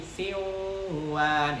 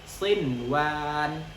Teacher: Jadi sinwan. Jadi nun sukun dan wawnya itu tidak boleh kita idghamkan menjadi siwan, itu nggak boleh.